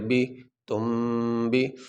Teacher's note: یہ نون ساکن کے بعد با آنے کی وجہ سے نون کو میم کے ساتھ تبدیل کر دیا گیا. اب یہاں پہ میم پڑھا جائے گا نون نہیں.